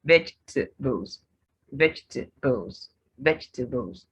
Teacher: three syllables there's a disappearing syllable there